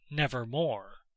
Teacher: the long o as the most sonorous vowel in connection with r as the most producible consonant